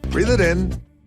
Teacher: What is more, here we can hear an American T as the T sound in it is between two vowel sounds, so it morphs into a soft D. So instead of hearing breathe it in, we get Breathe it in. · The pronoun it is a function word, so what happens here is that it hooks onto the following word in. What is more, here we can hear an American T as the T sound in it is between two vowel sounds, so it morphs into a soft D. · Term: connected speech